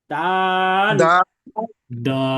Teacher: এবং এর মাখরাজ বা উচ্চারণ স্থল হলো জিহবার আগা সামনের উপরের যে পাটি আছে দাঁতের পাটি এই উপরের দাঁতের পাটির সামনের যে দুই দাত এই দুই দাঁতের গোড়ার সঙ্গে লাগিয়ে উচ্চারিত হয়। আমরা চিত্রের মধ্যে দেখতে পাচ্ছি যে এবার আগাটা সামনের উপরের যে দুই দাত এই দুই দাঁতের গোড়ার সাথে লাগছে এবং ওই অংশটা নীল হয়ে আছে।